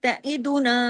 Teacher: تا کو لمبا نہیں کرنا، عین کو لمبا نہیں کرنا، تعیدونا، نون کو لمبا کرنا ہے